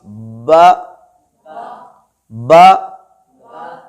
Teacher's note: با ہمارے ہونٹوں کے تر حصے سے